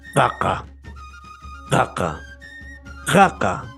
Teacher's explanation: es posvelar, o sea, quiere decir después del velo del paladar, sería en esta parte específica del aparato fonador. · pero en el quechua tiene un sonido como de un ronquido. O sea, de la siguiente manera, sería una oclusiva simple.